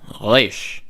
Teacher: They pronounce it like the French R. Resh, which is at the back.